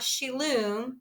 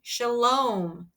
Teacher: That's a long O, like home.